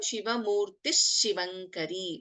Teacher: it will become ಶಿವಮೂರ್ತಿ ಶಿವಂಕರಿ ವಿ will not chant the ವಿಸರ್ಗ